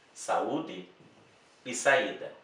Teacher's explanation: é um hiato, né? É um I tônico ou um U tônico.